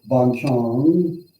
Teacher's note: So in Thailand, an elephant is Chong, Chong, just Chong. But when you have a rising tone and you say Ban Chang up, it doesn't mean elephant